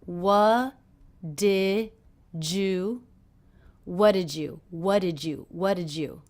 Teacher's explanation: a j sound here juju what did you did you so the D and the Y here are combining to make the J sound